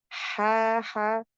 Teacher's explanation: ha dari e tenggorokan bagian tengah wasatul halqi